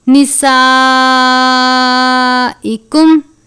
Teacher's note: بڑی مد ہے، اس کو 4 یا 5 الف کے جتنا لمبا کر کے پڑھتے ہیں. نسائکم ہن گول والی ہا ہے، یعنی پر کر کے پڑھیں گے.